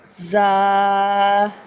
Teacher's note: زا میں سیٹی کی آواز آئے گی، زبان کی نوک دونوں دانتوں کے درمیانی کنارے سے ادا ہوگا